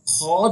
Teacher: अब खौ जो है इसका मखरज है, ये हल्क के ऊपर वाले हिस्से से अदा होता है